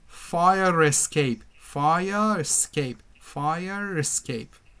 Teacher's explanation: when we have a vowel we link the words together and r is pronounced with the second word